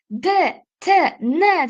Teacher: D, t, n deb talaffuz qilib ko'ringda tilingizning oldidan hosil boʻlyapti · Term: til oldi undoshlari